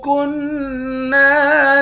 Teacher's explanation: کاف کو نون کے ساتھ ملا کر نون پر اخفا کریں گے، نون کو ایک الف کے مقدار کھینچ کر پڑھیں گے